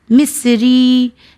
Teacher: میں نے رو اور یا کو تھوڑا کھینچا ہے، وہ اس لیے کیونکہ رو اور یا یعنی زیر کے ساتھ یا آیا ہے، تو یہاں پہ یا مدی کا قانون آ گیا ہے۔